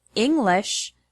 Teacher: the word English has the stress on the first syllable, ing.